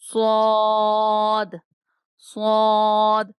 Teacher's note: زبان کی نوک اور اوپر نیچے کے دانت دونوں دانت صاد کا مخرج ہے